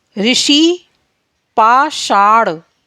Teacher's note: जीभ और मूर्धा में घर्षण के कारण वर्ण शा उत्पन्न होता है।